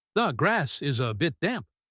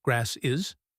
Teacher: The s sound attaches to grass. This is how we link words.